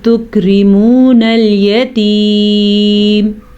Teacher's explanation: یا کو کھینچیں گے کیونکہ یا مدہ ہے